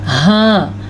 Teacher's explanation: وہ حلق کا آخری حصہ ہے جہاں سے یہ ہا نکلتا ہے